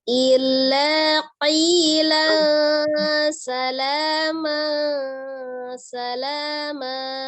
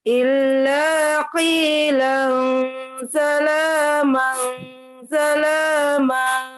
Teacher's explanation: Illa ditasdidkan saja tidak terlalu tekan. Tapi qi-nya boleh penekanan ditekan karena qaf kan hurufnya tebal.